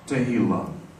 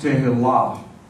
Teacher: The accent is on the last syllable.